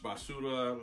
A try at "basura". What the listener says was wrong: You gotta roll your R's, dog.